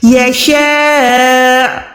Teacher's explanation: کریں گے، بڑی مد ہے، اس کے بعد حمزہ پیش ہے، حمزہ ساکن ہو جائے گا، یشاء، حمزہ کی تھوڑی سی آواز دیں گے